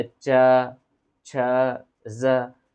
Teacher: तो च वर्ग का उच्चारण स्थान कहाँ से होता है जी? तालु से होता है।